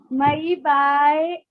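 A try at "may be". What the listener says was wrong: मई नहीं बेटा, मे है, मे बी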